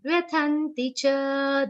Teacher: Tha has a prominent aghat of na.